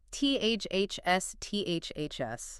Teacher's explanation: unvoiced TH, and then you pull it back really sharply to hiss the S